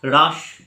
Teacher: লাস্টে যে স্বরধ্বনি রয়েছে, অন্তে যে স্বরধ্বনি রয়েছে সেটা আর নেই। এখানে রাস তালিবস্বয়ের উচ্চারণটাই নির্দিষ্টকরণ হয়েছে। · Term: অন্ত স্বরলোপ